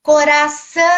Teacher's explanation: O co, ele é mais fraco que o são. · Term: tonicidade